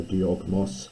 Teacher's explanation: So this is diogmos, where the dioko, the kappa, turns into a voiced guttural before the mu